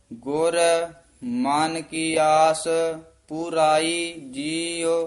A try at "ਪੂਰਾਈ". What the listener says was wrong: ਹਾਂਜੀ, ਪੂਰਾਈ ਪਾਠ ਜਿਹੜਾ ਨਾ ਪਰਾਈ ਨਹੀਂ ਕਹਿਣਾ, ਦਲੈਂਕੜ ਲੱਗੇ ਹੋਏ ਹਨ, ਦੀਰਘ ਉਚਾਰਨ ਕਰਨਾ ਹੈ। ਗੁਰ ਮਨ ਕੀ ਆਸ ਪੂਰਾਈ ਜੀਉ।